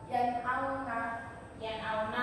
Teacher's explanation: Yang pertama ada idhar. Nah, idhar ini cara bacanya jelas. Jadi bukan mendengung, bukan samar